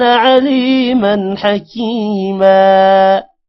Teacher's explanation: من غنہ نہیں ہوگا کیونکہ آگے حروف حلقی ہا آ رہا ہے